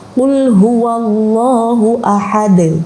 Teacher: Ada beberapa ulama itu yang cara membaca qalqalahnya itu tidak dipantulkan ya, tetapi dengan irama ada e-nya.